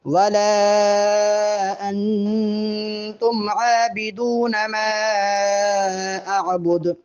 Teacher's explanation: انتم کے نون پر غنہ کریں گے اور دال پہ قلقلہ ہوگا